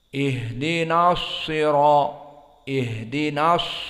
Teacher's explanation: Maka sad makhrajnya dia sifatnya al-isti'la dari mufakhamah, maka dibaca mufakham.